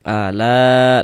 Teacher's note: Tapi dalam satu kata atau dalam satu kalimah, maka dia berubah menjadi mad wajib muttasil. Panjangnya 4 sampai dengan 5 harakat.